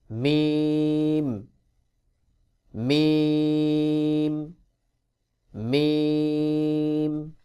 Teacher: লাম মিম দুই ঠোঁটের ভেজা অংশ হইতে বা উচ্চারণ হয় আর দুই ঠোঁটের শুকনা অংশ হইতে মিম উচ্চারণ হবে দুই ঠোঁটের যে শুকনা অংশ রয়েছে এখান থেকে মিম উচ্চারণ করতে